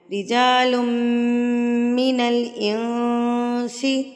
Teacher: نون ساکن کی آواز کو ناک میں چھپا کر پڑھتے ہیں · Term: اقفا